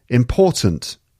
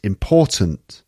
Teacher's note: again the second syllable is stressed important sometimes that at the end gets cut important this is